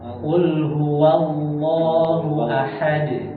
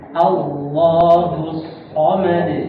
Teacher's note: Di lafzul jalalah Allah itu lamnya itu tafkhim, tebal.